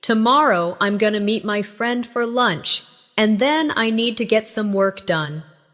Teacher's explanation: Stress, tomorrow. Meet. Friend. Lunch. And work. The other words should be softer and faster. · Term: natural rhythm of English